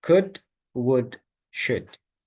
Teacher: Eliminate the L sound.